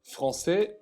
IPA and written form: fʀɑ̃sɛ (Français)